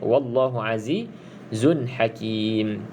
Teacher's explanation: Bagi sahabat-sahabat yang belajar tajwid, namanya dekat sini izhar halqi. Okey, tanwin bertemu dengan huruf ha, huruf salah satu huruf yang keluar dalam daripada makhraj halkum